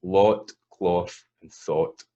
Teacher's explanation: So in a Scots accent, lot, cloth, and thought are all the same. · all of these are stable single vowels, right? So there's no movement in them. They start as one sound and finish in the same shape. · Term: the aw